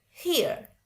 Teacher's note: Kalau orang American bacanya Here. Ada R-nya dikit.